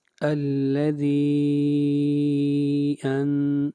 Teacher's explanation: آگے بڑھی آیت نمبر 3، الذی ان، یہاں پر جو الذی کے اوپر مد ہے اس مد کو مد منفصل کہتے ہیں اور اس کی مقدار 3 الف ہے، اس مد کو 3 الف کے برابر کھینچ کر پڑھا جاتا ہے